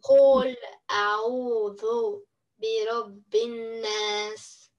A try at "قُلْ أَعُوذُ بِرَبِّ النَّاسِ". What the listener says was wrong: Хорошо, чуть дольше нун. برب الناس.